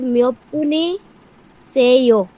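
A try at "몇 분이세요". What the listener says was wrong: মিয়ব্বনি সেও। প্রশ্ন করতেছে, একটা গলার টোনটা একটু ডিফারেন্ট হবে।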